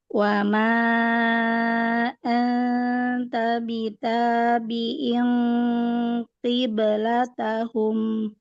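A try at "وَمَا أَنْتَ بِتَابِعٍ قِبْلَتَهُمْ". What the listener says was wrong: Ahsan.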